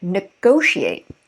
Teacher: stress falls two syllables before the ate in north american english